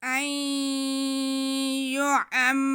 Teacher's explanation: मीनल अज़ाबी, बिमुज़हज़िही मिनल अज़ाबि अन युअम्मर, हमज़ा पे ज़बर और नून साकिन, नून साकिन के बाद या आ रहा है, नून साकिन के बाद या आए तो ये इदगाम का कायदा होता है, या हरफ इदगाम में से है, तो हम यहाँ पे नून की आवाज़ को या में मिलाकर पढ़ेंगे और गुन्ना भी करेंगे